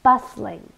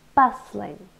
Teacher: so two syllables and we stress the first one bustling it's an adjective and it means or we use it